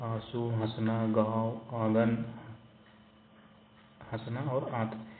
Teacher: इसके उच्चारण में नाक से बहुत कम सांस निकलती है और मुख से अधिक सांस निकलती है। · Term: अनुनासिक